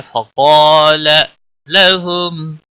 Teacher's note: میم ساکن کے اوپر اظہار ہوگا،